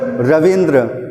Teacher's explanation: ठीक उसी तरह से रवि प्लस इंद्र, देख सकते हैं दोनों में ई छोटी ई यानी कि ह्रस्व है, तो दोनों ई मिलकर बड़ी ई यानी कि दीर्घ ई का निर्माण करते हैं